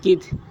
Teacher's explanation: تا میں بھی قلقلہ نہیں ہوگا کیونکہ تا کے اوپر جزم تو ہے لیکن حروف قلقلہ میں سے نہیں ہے۔